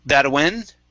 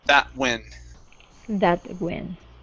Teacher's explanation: use a stop t with the t's and the W's